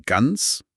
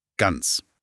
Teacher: hören wir das harte G tief im Hals